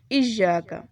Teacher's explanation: اس میں حمزہ کی آواز جھٹکے سے آنی چاہیے اور یا کے اوپر شد ہے تو اسے تھوڑا سختی سے پڑھیں گے